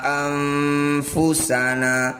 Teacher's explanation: bunyi nun sukun dengungkan dua harakat ketika dengung lisan kita sudah bersiap membunyikan huruf Fa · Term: Ikhfa